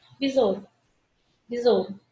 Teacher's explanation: eu pronuncio o O e quase esqueço do U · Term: semivogal